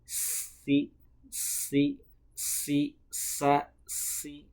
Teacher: Kenapa tipis? Karena ketika mengunjungkan huruf sin itu pangkal lidahnya tidak terangkat, jadi dia menipis. · sin dan shad itu sama-sama keluar dari ujung lidah bertemu dengan ujung gigi seri bawah